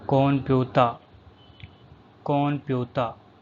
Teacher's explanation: N is pronounced as M because it is followed by P sound.